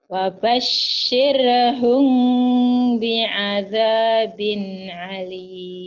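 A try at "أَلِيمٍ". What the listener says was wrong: Jangan alim, alim. Emang ain. Hamzah, alim, biasa aja. Wabashirhum bi'adzabin alim.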